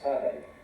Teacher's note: pronounce it as sadai, with a stress on the first one